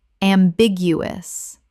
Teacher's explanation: Four syllables with the stress on the second